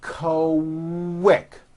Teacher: the word quick is pronounced with a K and a strong W sound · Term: Q sounds